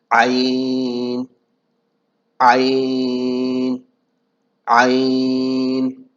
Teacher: تو یہ 6 حرف حلقی کہلاتے ہیں۔ تو عین کا جو مخرج ہے وہ گلے کے درمیانی حصے سے ہم اس کو ادا کریں گے۔